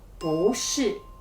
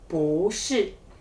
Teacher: if we say bu shi with the fourth tone, it sounds really abrupt